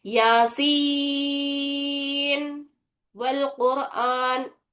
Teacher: नून की आवाज पूरी जाहिर करे, साफ पढ़े उसको, बिना गुन्ने के अदा करे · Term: इजहार